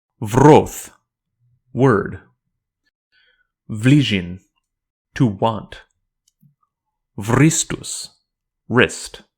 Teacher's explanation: the W is not silent in Valthungian. It's not really a W either, though. It's pronounced more like a V, and it is transliterated as a V.